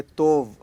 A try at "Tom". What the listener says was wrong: It's not tov, it is tom. Tom, like omkara.